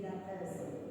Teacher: the T will become P before a bilabial consonant